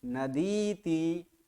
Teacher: नदी दीर्घ ई है, उसके बाद इति ह्रस्व ई है, तो दोनों मिलकर दीर्घ ई हो चुका है